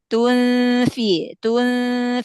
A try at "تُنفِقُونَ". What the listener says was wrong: Lebih ke depan, lebih ke makhraj huruf fa.